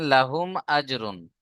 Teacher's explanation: মিম সাকিনের পরে মিম আর বা ছাড়া অন্য অক্ষর হামজা এসছে, তাই মিম সাকিনকে বিনা গুণনায় জাহির করে পড়তে হবে, একে ইজহারে শাফাবি বলে।